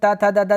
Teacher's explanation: कहते हैं अच्छा दंत दंत का मतलब त थ द द जब बोलिएगा ना आपका जीभ जो है वो दंत में सटेगा